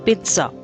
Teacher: There is a kind of t sound after p.